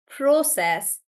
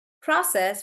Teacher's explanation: So the British pronunciation is more like pro and it'll be pronounced as process for British and for American it's more like pra